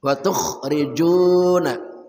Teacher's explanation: kha dari ujung kerongkongan